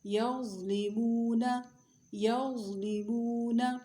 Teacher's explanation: غا کی آواز موٹی اور نرم ہوتی ہے، ہمیشہ موٹی ہوتی ہے ضا کی آواز، موٹی اور نرم